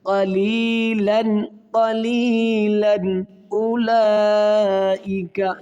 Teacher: یہاں پر غنہ نہیں کریں گے بلکہ یہاں پر اظہار کیا جائے گا، ظاہر کیا جائے گا، غنے کے بغیر پڑھا جائے گا۔